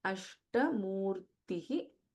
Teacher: In Ashta, we have Sha and Alpa Prana Ta.